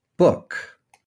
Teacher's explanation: The high back lax round vowel is as in the word book.